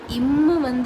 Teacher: கீழ் இதழும் மேல்வாய் பல்லும் இணைவதால் பிறக்கும் எழுத்து இம்மு. நம்ம உதட ஜாயின் பண்ணுறதுனால இம்மு பிறக்குது